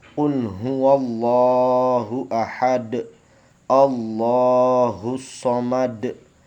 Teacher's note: Sedangkan qalqalah kubro, yaitu pantulan suara huruf qalqalah lebih besar karena huruf qalqalahnya sebenarnya hidup tapi dimatikan ketika waqaf, menghentikan bacaannya.